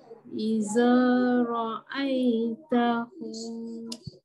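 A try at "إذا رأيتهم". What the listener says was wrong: Ada huruf zal, perbaiki sikit lidah keluarkan. Idza ra'aitahum.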